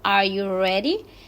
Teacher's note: la entonación ascendente que es Rising intonation O sea que la entonación sube se utiliza muchísimo cuando estamos haciendo pregunta de Yes or no